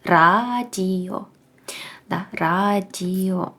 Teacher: на початку слова ми будемо читати її твердою літерою р